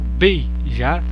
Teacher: Beijar, aqui sim há um ditongo. Beijar, um ditongo decrescente também, né? Perceba que o som do E sai mais alto do que o I.